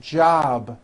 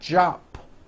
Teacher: Keep the voicing going throughout the whole word. Job with a voiced B ending.